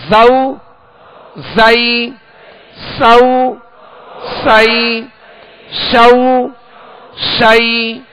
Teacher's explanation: زا سین کو سختی کے ساتھ سیٹی کی آواز میں پڑھیں گے